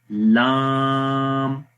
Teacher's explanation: استفال یعنی اس حرف کو باریک پڑھیں گے، یعنی زبان کی جڑ تالو کی طرف نہیں اٹھ رہی ہے، مطلب کہ آواز تالو کی طرف نہیں جاتی، حرف باریک پڑھا جاتا ہے